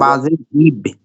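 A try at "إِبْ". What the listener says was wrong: এই কলকলা হবে না, কলকলা হবে না। ইবে এভাবে কলকলা হবে না, কলকলা হবে জজম। জজম ওয়ালা হরফ। হ্যাঁ, তাই জেলা হরফে কলকলা হবে না উচ্চারণের সময়। তাই জেলা হরফ একবার উচ্চারণের পরে একটু ধরে রাখতে হবে, 1 সেকেন্ডের মতো ধরে রাখতে হবে।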